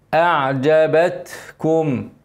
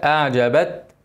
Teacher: ساكنه لازم نبين الهمس التاء بنهمس على طول لكن لما تكون ساكنه لازم الهمس ايه يبان عشان تظهر اعجبتكم الهمس ده هوا اسكن التاء اعجبت وبقى اخرج الهوا كده